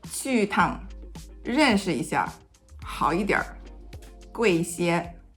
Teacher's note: it is a 轻声 or neutral tone when it is used in between a verb or adjective and a measure word